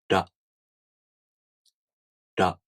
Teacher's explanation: For example, the R sound, as in ra, you tap the gum ridge with the tip of your tongue. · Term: taps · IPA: [ra]